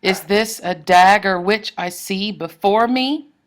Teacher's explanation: before me adds an extra syllable, and you have 2 stressed syllables at the end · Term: anapest